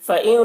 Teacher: نون میں اخفا ہوگا، نون ساکن کے بعد تا ہے، حروف اخفا میں سے۔